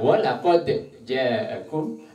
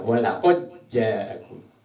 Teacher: Walaqad ja'akum dibentalkan dalnya, ada yang diidghamkan, dimasukkan suaranya dal, dimasukkan ke dalam suaranya jim sehingga berbunyi walaqad ja'akum.